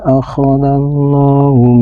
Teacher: Kalimat Allah ini harus dibaca tabhim, yaitu dibaca tebal